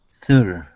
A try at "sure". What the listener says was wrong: Okay, push the tongue forward instead of having it up like this. Okay, it's going to come down from the S, and all you want to do is lift it up. Shh, sure.